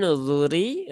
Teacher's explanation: karena rnya berbaris kasrah maka rnya tipis